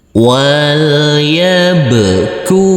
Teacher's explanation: Karena huruf ba sukun ini adalah bacaan qalqalah, maka harus wajib dipantulkan. Huruf kaf kita baca panjang dengan panjang 2 harokat.